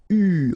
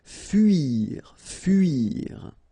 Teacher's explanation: it's not OU, it's really narrow. It's U. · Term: This U sound